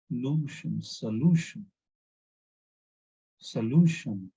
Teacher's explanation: It is not stressing on SA. It is not stressing on shun. It is stressing on LU